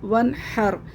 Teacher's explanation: इस पर भी हमें गुना नहीं करना क्योंकि नून साकिन के बाद ह आ रहा है · नून साकिन के बाद हुरूफ़ हल्क़ी में से हा आ रहा है, तो यहाँ पे हम गुन्ना नहीं करेंगे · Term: इज़हार हल्क़ी